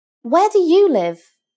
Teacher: Put some stress on the you.